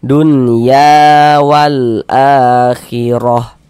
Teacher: Maka huruf yang memiliki harakat fathahnya dibaca panjang sehingganya ya kita baca panjang. Mad thobi'i panjang dua harakat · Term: Mad tabi'i